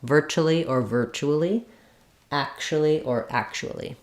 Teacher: virtually um can be ver four syllables or virtually vir but in both cases we stress the first syllable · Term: first syllable stress